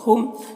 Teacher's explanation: میم ساکن کے بعد با ہے تو اخفاء شفوی ہوگا غنہ اخفاء کے ساتھ پڑھیں گے